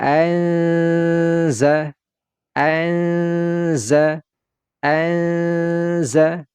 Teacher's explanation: suara Nun sukunnya ini tidak kita baca jelas tetapi kita baca dengan samar-samar seolah-olah kita mau menyebutkan langsung huruf zainya · kita mau menyebutkan langsung huruf zainya seperti ini anza anza anza Nah di sini ada terjadi gunna ya dia ditahan terlebih dahulu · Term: ikhfa Hakiki, ikhfa haqiqi